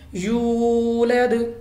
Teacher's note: ہمارے پاس واو ساکن سے پہلے زیر ہے، تو یہ ہم واو ساکن سے پہلے پیش ہے سوری، تو یہ ہمارے پاس واو مدہ بن گیا، ہم نے اس کو کھینچنا ہے